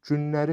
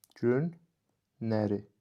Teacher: bu sözün tərkibində iştirak edən l samiti də n samiti ilə əvəz edilibdir